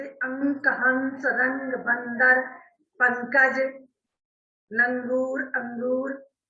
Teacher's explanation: तीसरा अंतर क्या है, अनुस्वार इसके उच्चारण में नाक से अधिक हवा निकलती है